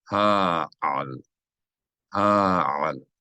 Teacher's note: You should hear two distinct syllables, not hal, not hal, but ha'al. If you see two vowels in a word, that means there are two distinct syllables.